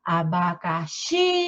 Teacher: A sílaba mais forte de abacaxi é o xi. Então, também é a última sílaba mais forte.